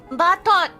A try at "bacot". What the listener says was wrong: No, batot. Bacot. Bacot. No, chot. Not T-O-D, but C-O-D. It's chot.